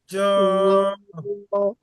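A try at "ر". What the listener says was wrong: জ না, জ বললে এই যে জিম যে আছে, এই জিমের উচ্চারণটা আর কি চলে আসে। র, না, এই এটা হবে র, আর হবে এই রাল, আর এটা হবে সা। তিনটা হবে যে একই রকম উচ্চারণের হবে, তিনটা যে পাতলা হবে। র, আর রাল, আর সা। র, র,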